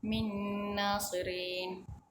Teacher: Bacaan huruf nun mati dimasukkan ke dalam huruf nun dan didengungkan sepanjang 2 harakat.